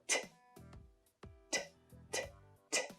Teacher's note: so that is an unvoiced sound so again there is no vowel sound it's a single consonant sound